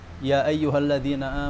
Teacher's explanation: Nah, itu bagi madhab yang ini hadr, itu mad jaiz munfasilnya itu pendek. Jadi 2, seperti mad tabi'i. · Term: qasrul munfasil